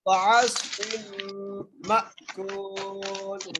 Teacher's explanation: میم کو جھٹکے سے پڑھیں گے · فا کو میم سے ملاتے ہوئے غنہ کریں گے